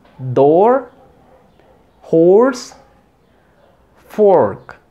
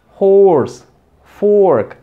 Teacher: Como en door, horse, fork. Es una O, pero como que tiende a cerrar.